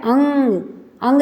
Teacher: अंग जब बोलेगा तो वह केवल नासिक से ही बोलेगा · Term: नासिक्य